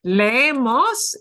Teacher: We dragged the S sound out a little longer.